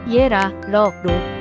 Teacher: 리을은 유음으로 혀가 입안의 공간을 살짝 올리면서 나는 소리입니다